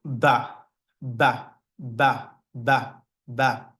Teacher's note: It's produced by closing your lips and trying to burst out some air with the ba sound. So you close your lips and you be like ba, ba, ba, ba, ba.